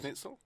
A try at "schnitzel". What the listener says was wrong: You putting quite a bit on the SCH. It does, but you don't need to pronounce it so much, do you? Schnitzel.